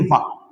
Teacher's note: वा को दोनों ही उच्चारण स्थान से उच्चारित किया जाता है, एक तो दंत और दूसरा ओष्ठ। तो ये जो लिखा है दंतोष्ठ, यही वास्तव में उच्चारित होता है 2 स्थानों से और इसको लिख देते हैं वा।